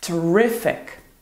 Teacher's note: See, in the words terrible and terrifying, we emphasize the first syllable, terrible, terrifying, while in terrific, the stress is on the second syllable